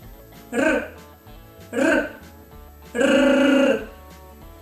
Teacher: When we pronounce the sound R, our tip of the tongue vibrates near the upper teeth or the teeth ridge. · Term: consonant R